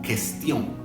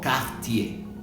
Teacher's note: La QU es parecida al español, no se va a pronunciar la U.